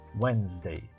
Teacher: Não tente falar o D, ele não é pronunciado. Nós chamamos essa letra de silent letter, ou uma letra silenciosa, ou muda, não se pronuncia, nem um pouquinho.